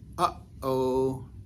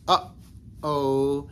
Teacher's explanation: it's the sound that kind of you close off in the back of your throat and you open again, similar to if we were to say uh-oh. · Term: glottal stop